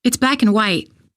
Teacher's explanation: Black and white are stressed here.